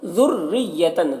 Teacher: ذریتن دال کو باریک پڑھنا ہے، اور را کو بھی باریک پڑھنا ہے، اور دیکھیے دونوں میں تشدید ہے تو ملا کر پڑھنا ہے، سختی کے ساتھ ایک دوسرے سے ملا کر پڑھنا ہے۔